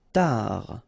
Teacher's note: Final D not pronounced.